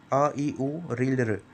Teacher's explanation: इनको बोलने के लिए एक मात्रा का समय लगता है यह मतलब बहुत ही जल्दी बोले जाते हैं आप खुद बोल के एक बार देख सकते हैं अ इ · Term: मूल स्वर